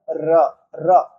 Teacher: जैसे ही आप र बोलेंगे, र बोलेंगे तो हमारा जो जीभ है ये वाइब्रेट करता है। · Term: प्रकंपी व्यंजन